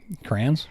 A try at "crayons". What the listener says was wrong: Cranberries? Crayons. There's a Y in there.